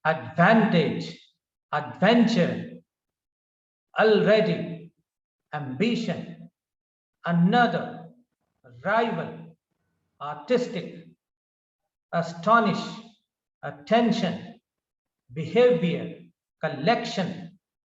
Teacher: in these words the stress is on the second syllable